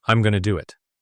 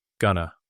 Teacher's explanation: In natural, relaxed speech often becomes, I'm going to do it. The going to blends and shortens. Gonna. Similarly, want to often becomes wanna.